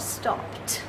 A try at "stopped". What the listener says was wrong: Stopped. You can't say d, stop and d. Stopped.